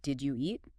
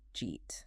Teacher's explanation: did you eat? Which often becomes just jeet